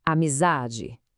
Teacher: O za é que se alonga, que se destaca. Essa é a sílaba tônica.